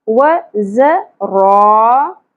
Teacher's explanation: را کے اوپر زبر، الف حرف مدہ ایک الف کے برابر کھینچیں گے اور را کو پر پڑھیں گے